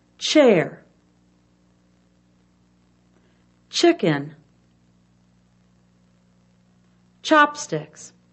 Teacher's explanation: and pushing the lips outward the teeth are shown clenched together the tip of the tongue touches the top of the mouth air is blown through quickly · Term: ch sound